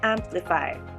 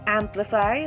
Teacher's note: The first syllable is am, second syllable is pli, and third syllable is fi, amplify. The stress is in the first syllable. Amplify, not amplify, nor amplify.